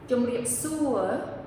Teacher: Now, when I say the whole phrase, jom, riep, su, you can hear that the word su is the loudest word in the phrase, the most accented word in the phrase. So to remember that when you say it eventually, as you get through these three words here in the phrase, to make the su the highest point or the loudest point of your phrase there.